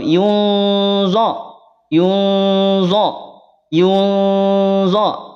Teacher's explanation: Yun bisa dibedakan kalau Yun tipis tapi kalau Yun Yun yun diangkat pangkal lidahnya dia menjadi tebal Kenapa tebal karena do termasuk di antara huruf yang tebal punya